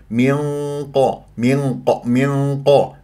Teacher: الغنه مفخمه مرتبه ثانيه من ق من ق ولا اقول منقو لا تكور الشفاه في القاف ولا تفخم الغنه